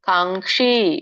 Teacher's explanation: ಸಾತ್ವಿಕಂ ಇಲ್ಲಿ ನೋಡಿ ಕಾಂಕ್ಷಿ ಕಕೆ ಶವತ್ತಿದೆ. ಸೊ ಹಾಗಾಗಿ ದೊಡ್ಡ ಷಟ್ಕೋನ ಶ ಇರೋದ್ರಿಂದ ರೋಲ್ ಮಾಡ್ಬೇಕು ನಾಲ್ಗೆನ.